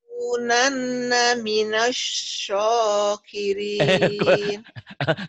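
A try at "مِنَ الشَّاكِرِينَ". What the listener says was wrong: Kebalik yang A jadi di O-in. Ini masa atau jangan sokirin. Ketuker-tuker. Sya saya jangan apa? Sok. Ini sya ya. Lanakunanna minas sya. Sya udah benar. Udah sya-nya benar.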